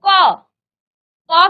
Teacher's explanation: जब आप इस क का उच्चारण करेंगे तो क क के पीछे से कहीं ना कहीं आप अ का उच्चारण कर रहे हैं बिना अ के आप इस क का उच्चारण नहीं कर सकते